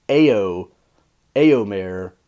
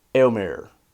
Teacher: you say it so fast that it's basically one syllable and basically sounds like one sound even though it's really not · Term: diphthong